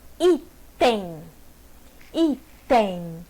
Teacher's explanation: Tá vendo que esse M é como se tivesse um I nasalizado? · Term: ditongo decrescente